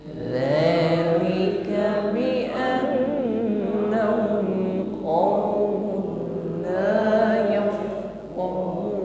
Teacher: tidak ada desis ketika mengucapkan dzal